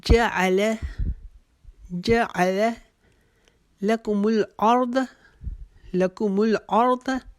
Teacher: اردہ کو لمبا نہیں کریں گے, را کو موٹا پڑھتے ہوئے داد کو بھی موٹا پڑھیں گے